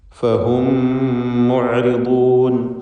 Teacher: സാക്കിനത്തായ മീമും ശേഷമുള്ള മീമും ലയിപ്പിച്ച് ഒറ്റ ശബ്ദുള്ള മീമാക്കി മണിച്ചുച്ചരിക്കുക. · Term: ഇദ്ഗാം ഷഫവി